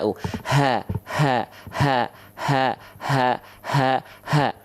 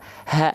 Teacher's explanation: bukan dari Dada ya tapi dari pangkal tenggorokan